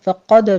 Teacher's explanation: فقد میں قاف کو پر پڑھنا ہے، دال پر قلقلہ کریں گے